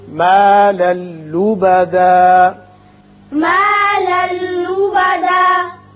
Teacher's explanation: لام پر دو زبر تنوین ہے، آگے لام ہے، یہاں ادغام بغیر غنہ ہوگا